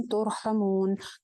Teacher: तुर रॉ मोटी हो जाएगी क्योंकि साकिन है और साकिन रॉ से पहले पेश है।